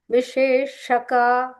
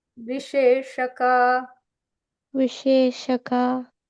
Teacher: So Vishe. Shaka is the deeper sha, like Shanmukha. So that you have to curve your tongue a little bit.